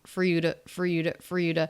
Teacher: for we just almost never fully pronounced that word the word two is reduced it's a flap T plus wah